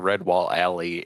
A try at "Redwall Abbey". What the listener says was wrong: Abby. Alley. You said alley, my boy.